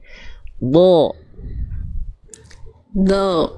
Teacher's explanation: pangkal lidahnya naik karena dia huruf tebal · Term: huruf dot